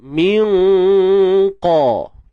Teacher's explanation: Waktu kita sembunyikan nun tu, kita punya lidah kita ni dah adjust habis baik dah untuk nak sebut qaf tu. Bayangkan kita nak sebut qaf tapi lidah kita bersedia pada makhraj ta.